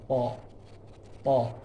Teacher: Th tebal, kalau ta tipis tipis. Th lidah belakangnya naik ke atas kalau ta enggak naik. Kemudian kalau ta ada hames, ada angin.